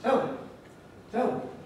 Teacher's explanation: me has a weak vowel when we weaken it to me. It gets the happy vowel.